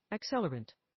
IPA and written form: ækˈsɛlərənt (accelerant)